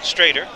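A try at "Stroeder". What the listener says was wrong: yeah it's not straighter yeah well it's an O instead of an A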